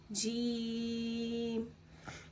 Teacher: جیم پہ مد ہونے کی وجہ سے ہم اسے 3 الف یعنی 3 سیکنڈ لمبا کھینچ کے پڑھیں گے